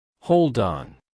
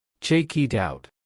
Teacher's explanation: In English, when a word ends with a consonant sound and the next word begins with a vowel sound, the consonant jumps across the boundary and attaches to the vowel. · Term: consonant to vowel linking